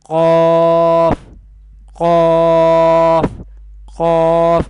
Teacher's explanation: It will be categorized in Lahviya category, and Qaf will be pronounced from the root of the tongue and the soft palate.